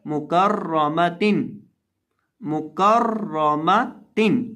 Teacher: इस लफ्ज़ के अंदर हमने रॉ को पुर करके पढ़ना है, क्योंकि रॉ के ऊपर ज़बर है